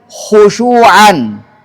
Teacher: Kemudian khusyu'an yang berkat dhamma tetap tebal.